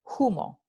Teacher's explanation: La letra H no se pronuncia, pero en el andaluz sí se va a pronunciar solo para estas palabras que en latín comenzaban con F.